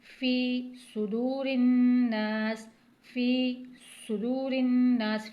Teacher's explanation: फी को एक हरकत के बराबर खींचेंगे क्योंकि ये याई मद्दा बन रहा है, या साकिन है, उससे पहले ज़ेर आ रहा है, तो याई मद्दा को एक हरकत के बराबर यानी थोड़ा सा खींच के पढ़ते हैं।